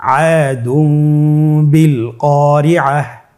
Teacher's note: তানবিনকে মিম দ্বারা পরিবর্তন করে গুন্নার সহিত পড়ব